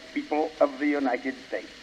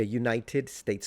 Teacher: So he is pronouncing every T